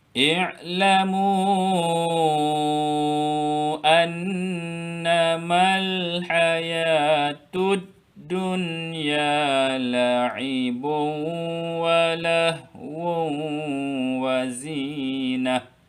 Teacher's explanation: Nun bertanda syaddah ada dengung